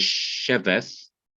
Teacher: the word is sheveth, and the accent is on the she. When the lameth comes before it, it will take the kamis, or the long ah sound.